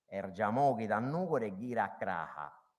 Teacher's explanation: in alcuni parlanti la S tende ad essere sostituita anche questa volta da un suono più arretrato, per cui crasa può diventare craha.